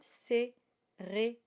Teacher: And the E, of course, at the end is not voiced, it is silent.